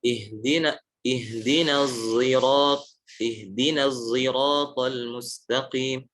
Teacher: ismam adalah mencampurkan antara shad dengan zai. Contohnya dalam qiraat Hamzah.